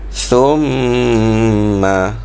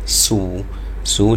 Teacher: huruf tha tu, huruf tha, cara sebutannya mesti kita keluarkan lidah sedikit. Sebut seperti sebut huruf S, tetapi S yang dikeluarkan lidah.